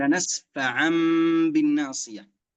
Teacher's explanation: يجب قلبهما إلى حرف ميم، هذا الشرط الأول. الشرط الثاني إخفاء الميم في الباء. الشرط الثالث إثبات الغنة مع هذا الإخفاء.